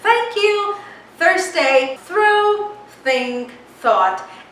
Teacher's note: it's just passing off the air through your mouth with the tip of your tongue between your upper and your lower teeth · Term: voiceless th sound